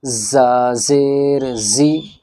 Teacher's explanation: زبان کی جو ہماری نوک ہے یہ نیچے کے جو ہمارے دو دانت ہیں ان کی جڑ میں لگے گی